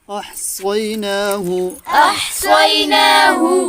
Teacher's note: صاد کو موٹا بھی کرنا ہے اور سیٹی بھی بجانی ہے. دو کام کرنے ہیں.